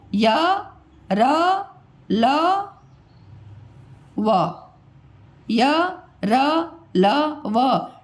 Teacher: क्योंकि ये जो होते हैं ना बेटा, ये जो चार व्यंजन है, इसको जब उच्चारण आप करते हो तो आपके गले से वायु बाहर निकलती है और वो बिल्कुल मुंह से बाहर निकल जाती है, किसी स्थान को वो टच नहीं करती है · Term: अंतस्थ व्यंजन